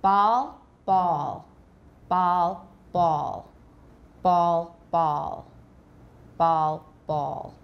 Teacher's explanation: There's more rounding with ball, A-W.